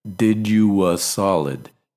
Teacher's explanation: after oo, we put a little w sound in there